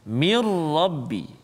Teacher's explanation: Kesempurnaan huruf nun bunyi itu hilang, masuk dalam ra. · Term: idgham bila gunnah